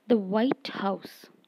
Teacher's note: when we refer to the official home of the American president the White House the word white is usually stressed more heavily than house